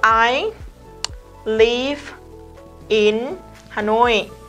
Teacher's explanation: Phụ âm kết thúc của từ đằng trước nối với nguyên âm bắt đầu của từ đằng sau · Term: nối âm